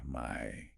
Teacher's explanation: You are racing from the low back coordinate to the high front coordinate in a fraction of a second. My. You can put your hand under your chin and physically feel your jaw rapidly closing.